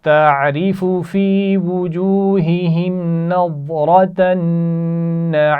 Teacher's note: نظرۃ النعیم ضاد اور را دونوں موٹی پڑی جائیں گی اور نون نعیم کا نون اس پر غنہ کیا جا رہا ہے.